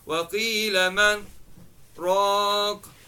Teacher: then stop for a short time without taking a breath, then read raq. The sakta is what prevents the idgham from merging, okay, from taking place, since it prevents the noon and the ra from meeting.